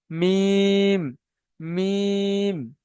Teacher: তো এই শুকনা অংশ ও নিচের শুকনা অংশ এবং উপরের শুকনা অংশ মিলিত হয়ে উচ্চারণ হয় মিম। মিম বেশি নয়, এতটা নয়, হালকা ঠোঁট দুটো মিলিয়ে যাবে মিম